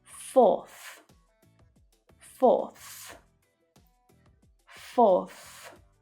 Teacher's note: four ends in a vowel sound, so we just add the TH sound after it